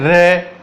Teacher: रे बोलने प्रकंपित, कंपन न करनी पड़ती है। जब अपन बोलते हैं रे तो अपनी जबान 3 से 4 बार क्या करती है? कंपन करती है, वाइब्रेट होती है। ठीक है, वाइब्रेट होने के कारण इसको प्रकंपित कहते हैं।